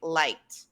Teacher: the verb like ends in the consonant sound k, which is unvoiced. So we use the other sound t.